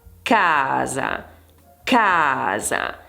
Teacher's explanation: Nella parola casa, ad esempio, abbiamo 2 sillabe, in questo caso l'accento cade su ca e quindi la pronuncia in questo caso è più intensa